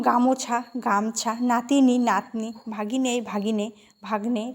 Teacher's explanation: শব্দের মধ্যে অবস্থিত স্বরধ্বনি যদি লোপ পায় তাকে মধ্য স্বরলোপ বা সম্প্রকর্ষ।